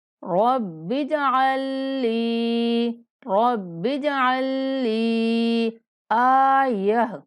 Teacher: عین کو مشدد لام کے ساتھ ملاتے ہوئے 3 سیکنڈ تک لمبا کر کے پڑھنا ہے · ملاتے ہوئے 3 سیکنڈ تک لمبا کر کے پڑھنا ہے، اور یہ جو بیچ میں ساکن لام ہے اس کا ادغام کر دینا ہے